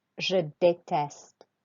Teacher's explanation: You have to put your voice up on the E.